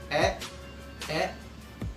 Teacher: lidah kalian berada di tengah pada kata e, dan juga pada bagian mid, yaitu lidah kalian juga maksud saya rahang kalian tidak terlalu terbuka ya, rahang kalian terbuka dan bisa dirasakan lidah kalian berada di tengah. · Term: sentral